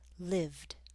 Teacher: A voiced consonant like v in live will make the ed ending sound like a d, lived. Also, if a verb ends in a t or d, that ed ending will add an extra syllable.